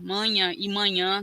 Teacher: tem a nasalidade aí da vogal mas também tem a sílaba tônica